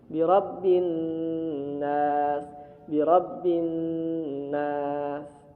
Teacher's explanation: Dengung itu karena ada suara di rongga hidung sehingga huruf nunnya masuk dulu ke rongga hidung, terasa di rongga hidung, bergetar. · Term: gunnah musyaddah